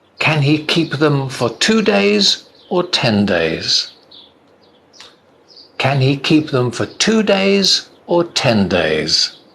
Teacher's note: when you're doing a list the voice goes up and then it comes down at the end